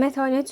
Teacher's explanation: Uzun saytlı adı. Yəni məsələn mətanət sözündə A uzanır da.